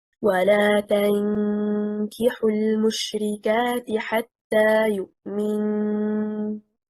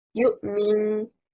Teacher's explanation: The correct performance stressing on حركة الميم leads to pronounced تشديد at the end of the word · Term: غنة أكمل ما تكون